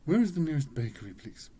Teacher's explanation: the word bakery is the main stress.